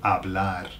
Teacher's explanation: Now bear in mind that the H is silent. When words start with H in Spanish, they're silent.